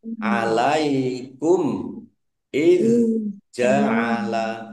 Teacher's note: mim sukun bertemu dengan alif bacaan izhar syafawi dibaca jelas